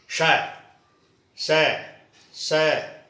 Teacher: ये रगड़ से बोले जाते हैं, वायु जो है वो रगड़ खाती है। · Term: ऊष्म व्यंजन